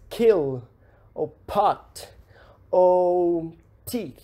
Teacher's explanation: plosivas surdas aspiradas, que nós soltamos um pouco mais de ar na hora de pronunciar